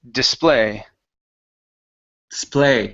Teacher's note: the stress is on the very end